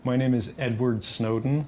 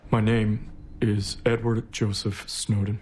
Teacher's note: Edward Snowden has a really particular and interesting vocal quality, some of which comes from actually pushing down on his larynx. He's physically lowering it.